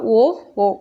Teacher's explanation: இரு உதடுகளையும் குவிப்பதால் உண்டாகும் எழுத்து எதுன்னா ஓ ஓ சோ சொல்லி பார்த்தீங்கன்னா தெரியும் மேல்கீழ் உதடுகள் பொருந்துவதால் கா